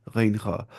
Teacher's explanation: गैन खा पढ़ना है ऊपर से, अक्सा नहीं, अदना हलक से, यानी closest part of throat from mouth